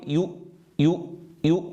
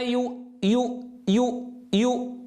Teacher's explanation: الهمزة ساكنة، لا يصح أن أضم الشفتين عندها